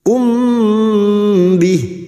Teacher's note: ba Ikhfa Syafawi biasanya mim sukun dibaca jelas namun kali ini mim sukun bertemu ba maka mendengung selama tiga harakat